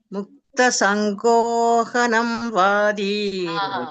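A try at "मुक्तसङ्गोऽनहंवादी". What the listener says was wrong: ಇಲ್ಲ, ಹ ನೋಡಿ, ನ ಇದೆ ನೋಡಿ, ಸಂಗೋನಹಂ. ನ ಆದ್ಮೇಲೆ ಹ, ನೀವು ಹ ಆದ್ಮೇಲೆ ನ ಹೇಳ್ತಾ ಇದ್ದೀರಾ.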